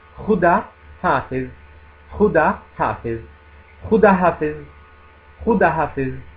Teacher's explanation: Khuda è una parola che significa Dio, accanto alla famosissima Allah, Khuda, è di origine persiana, ha questo suono iniziale, la Khe, che non è assolutamente difficile, è semplicemente un suono simile alla Chiapra, K, però con un piccolo raschio della gola, simile alla Jota dello spagnolo